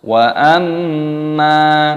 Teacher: mimnya didengungkan, ada gunnah, mim tasdid dibaca gunnah berdengung dan dipanjangkan mimnya